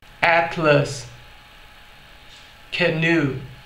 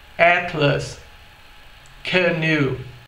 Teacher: a gente pode obter o som do schwa nas duas palavras logo no fim, como em Atlas, ou no começo, canoe